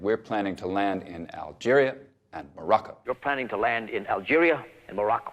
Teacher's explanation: staccato delivery that's very forceful